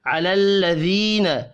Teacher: या मद्दा है, एक अलिफ के बराबर खींच कर पढ़ना है